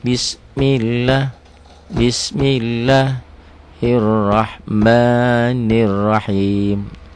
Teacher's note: dibaca tipis karena sebelumnya adalah baris di bawah kasrah